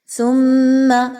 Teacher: سا اور میم کو آپس میں ملائیے، میم مشدد کا غنہ کیجئے